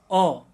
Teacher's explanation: दूसरा है मध्य स्वर अ का उच्चारण करते हम देख रहे हैं कि जिह्वा का ना अग्रभाग काम कर रहा है ना पश्च भाग, जबकि हमें ऐसा महसूस होगा कि जिह्वा का जो मध्य भाग है वो काम कर रहा है।